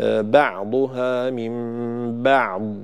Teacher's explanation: لا يصح قلقلة الضاد لدى الوقف عليها، فلا أقول من بعض ولا أقول من بعض همس، بعض همس لا يصح، وإنما أعطيها صفة الاستطالة وأنهي صوت الضاد بدون قلقلة ولا همس، فأقول بعضها من بعض بهذا الشكل.